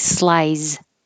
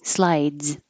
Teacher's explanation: stop the airflow and then make a Z